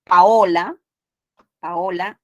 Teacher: la a y la o se separan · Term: iato